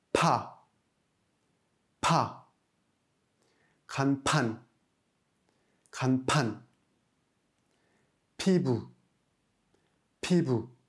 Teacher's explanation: un son P, mais bien plus fort, avec plus d'air expulsé. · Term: piep